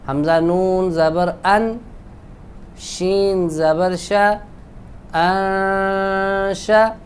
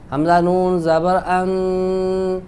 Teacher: جب آپ آگے شین کو ملائیں گے تو پھر ہم اخفا کریں گے. تو یوں پڑھیں گے حمزہ نون زبر ان شین زبر شا انشا.